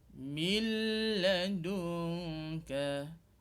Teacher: Nun mati dengan huruf lam tu kita gabungkan suara nun dengan lam tu, tetapi tidak dengung. Maksudnya tidak diikuti dengan gemaan hidung. Maksudnya tak dengung. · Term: idgham bila gunnah